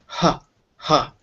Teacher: you can feel how the only part really doing anything is at the very bottom of your neck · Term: gladle